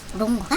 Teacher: NG가 가운데 오기 때문에 기역 받침까지 나서 롱거가 됩니다. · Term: 이응 기역 소리